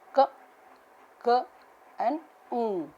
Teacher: Velar sounds produced with the contact of the back of the tongue and the soft palate. The back of the tongue is the active articulator and the soft palate is the passive articulator.